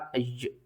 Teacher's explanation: अलिफ़ के ऊपर जब भी जज़म आ जाए तो हम अलिफ़ को झटके के साथ पढ़ते हैं